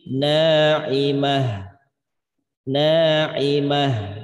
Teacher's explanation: Karena hak memiliki sifat khifa atau khofa, ya, tersembunyi dia. Maka diperjelas bunyi haknya. Jadi pelan-pelan bacanya.